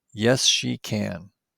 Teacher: Can has a strong vowel sound in yes/no questions because it isn't followed by another word.